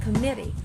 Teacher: if you're talking to Americans, they sometimes drop the T, so it will sound committee.